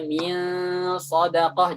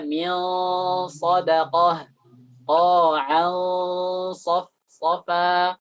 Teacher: Al-amsilah, contohnya pada huruf as-sad, qauluhu ta'ala min sadaqah qa'an safa. Jadi ketika bertemu dengan sad itu gunnahnya tebal.